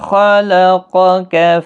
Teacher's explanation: خا حروف مستعلیہ ہے، قاف بھی حروف مستعلیہ، دونوں کو پر پڑھنا ہے